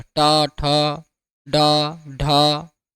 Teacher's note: मूर्धन्य का मतलब क्या होता है? जीभ का अंदर की ओर मुड़ना।